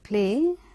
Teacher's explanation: It is a glide from a front unrounded vowel just below, half close to a centralized front unrounded vowel just above, half close. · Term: diphthong